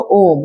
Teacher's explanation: ओम को काफी लंबा समय तक उच्चारण करते हैं ना, इसमें ज्यादा समय लग रहा है, ये 3 गुना समय लग रहा है। तो ये वाला ओम यानी जो बीचा में जो ओ के काम कर रहा है, ठीक है ना, इसी को बोलते हैं पलुत।